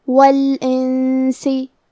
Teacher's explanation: ہم نون ساکن کو چھپاتے ہوئے اور غنہ کے ساتھ یہ حکم کو ادا کریں گے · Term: اخفاء